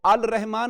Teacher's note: اس میں مدغم کر دیتے ہیں، جوڑ دیتے ہیں، اور لام کا تلفظ نہیں ہوتا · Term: حروف شمسیہ